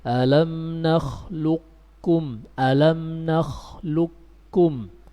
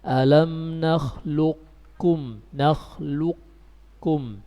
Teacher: idgham kamil dengan menghilangkan qafnya. Kita membacanya alam nakhluqkum, alam nakhluqkum, qafnya hilang. Atau dengan idgham naqis, dengan menyisahkan sifat isti'la pada qaf, kita membacanya alam nakhluqkum, nakhluqkum.